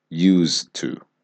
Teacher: So even though there is an ed, we are not pronouncing it like use it. We are pronouncing it as one syllable as use.